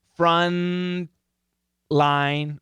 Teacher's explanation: NTL, same tongue position.